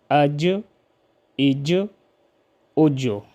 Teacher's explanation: جیم جب ساکن ہو تو اس میں ہم قلقلہ کریں گے